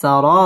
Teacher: রা পুর হবে এবং রা এক আলিফ টান দিয়ে পড়তে হবে